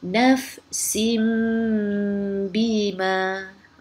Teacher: Nafsin sepatutnya bunyi nun sin, tapi bila bertemu dengan ba, kita tukarkan bunyi nun kepada bunyi mim. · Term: iqlab